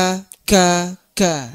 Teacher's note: qf agak ke depan sedikit ada huruf Kaf Kaf ini ee dia posisinya di Pangkal lidah dia harus ditekan ada syiddahnya nah salah satu sifat yang dominan di huruf ini adalah syiddah